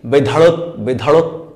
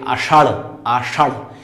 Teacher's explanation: এই যে পেছনে জিহ্বাটা ঝাপটা মেরে বাতাস তাড়িয়ে উচ্চারিত হয় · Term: তাড়নজাত বর্ণ